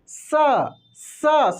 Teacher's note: ये दंत स है इसका उच्चारण आगे वाले पार्ट से होता है जैसे आप बोलेंगे ना तो दांत से आपके हवा निकलेगा